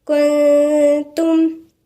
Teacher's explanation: هتلاقوها غنة مرققة. ليه؟ لأن النون الساكنة وبعديها التاء، والتاء من الحروف المرققة